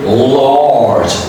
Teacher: this is a light L, is coming in the beginning of the word, so you say large.